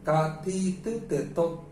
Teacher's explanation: 全部舌がパチパチパチパチ上の歯の後ろ側に当たると思うんですね